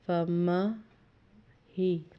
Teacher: ہا کے اوپر شد ہے اس لیے میم کے ساتھ اس کو ایک دفعہ ملایا، دوسری دفعہ اس کے نیچے زیر تھی وہ ادا کی